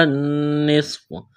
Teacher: صاد میں سیٹی کی آواز پیدا کریں گے، صاد کو موٹا کرنا ہے